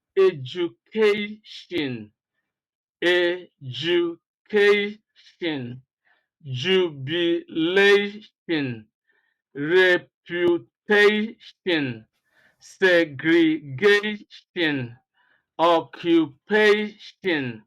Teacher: you can always see that stress comes immediately before the suffix, which is ION or TION if you like.